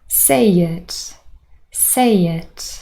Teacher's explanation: there's a ye appearing here it is added so that we can move from a to it without any break in between · Don't know if you were able to hear, a little sound appeared, and it is the semivowel y